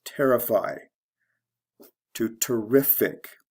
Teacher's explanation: the stress goes from the first to the second syllable ify is a verb ending to ic so we go from